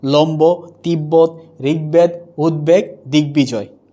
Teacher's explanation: বফলা যদি গ, দ, ব, ম এর সাথে যুক্ত হয় তাহলে বয়ের উচ্চারণ কি থাকবে? অবিকৃত থাকবে